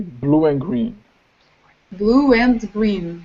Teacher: It's vowel plus W plus vowel.